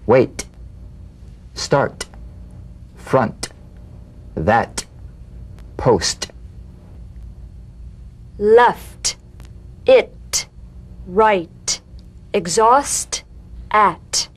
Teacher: the same staccato springing action as the D drum beat with no voice forms the light tap of the T